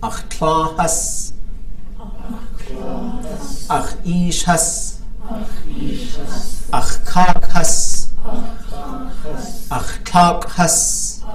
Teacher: So the has is a high tone, right? It comes after these kinship terms.